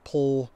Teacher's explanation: Pull, and a lot of people's pronunciations, including mine, the vowel is an L.